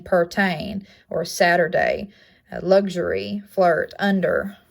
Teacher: It is a mid-central, rounded, and lax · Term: right hook schwa